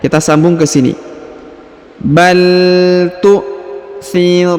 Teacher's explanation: Huruf na langsung sambung ke alif lam qamariyah